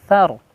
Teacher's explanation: Fa'athar langsung setelah huruf tha bertemu dengan huruf ro sukun ya, jadi tafhim